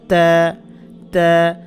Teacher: জিহ্বার আগাটা সামনের উপরে 2 দাঁতের গোড়ার সাথে লাগাতে হবে।